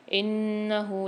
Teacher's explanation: نون پر مشدد ہے، غنہ کر کے پڑھیں گے